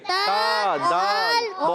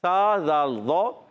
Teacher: دونوں میں زبان کا سرا ہوتا ہے، تا میں بھی اور دال میں بھی، تا دال تو میں بھی، سا دال ضا میں بھی زبان کا سرا 6 حروف میں ہے، مگر تا دال تو آیا تو زبان کے سرے کے ساتھ ساتھ اوپر کے دانتوں کی جڑ استعمال ہوئی، اور جب سا دال ضا آیا تو زبان کے سرے کے ساتھ اوپر کے دانتوں کے کنارے استعمال ہوئے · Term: حروف نطعیہ